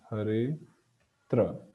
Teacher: Then a Rama gets deleted. So hare atra becomes hare tra.